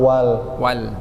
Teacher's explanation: Coba walnya jangan ketebalan Pak. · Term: lamnya